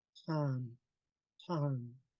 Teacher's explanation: there's um, there is air being blown from the back of the throat. Son, son. So um, you could barely hear it, um, but you could feel it when you pronounce it.